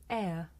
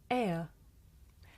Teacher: this is a diphthong, a double vowel sound the shape the mouth makes changes from the beginning of the sound to the end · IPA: /eə/